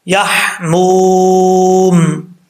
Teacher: یہاں پر واو مدہ ہے، ایک الف کی مقدار، اس کو لمبا کریں گے